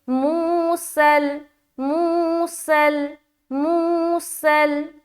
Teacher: सीन में सीटी की आवाज आएगी और लाम से मिला देंगे